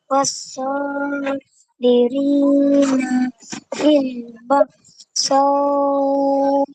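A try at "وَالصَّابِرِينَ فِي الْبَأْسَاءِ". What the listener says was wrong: E tu satu harakat bukan dua harakat. Ulang balik.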